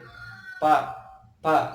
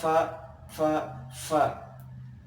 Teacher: ujung gigi seri atas ditempelkan kepada bagian bibir bawah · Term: huruf Va